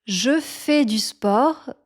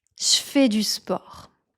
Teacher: before the sounds [f], [k], [p], [s] or [t], we tend to replace the sound [ʒ] with a sound [ʃ]